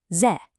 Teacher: This is a fourth tone, the falling tone. I want you to think of it as a sharp, decisive command.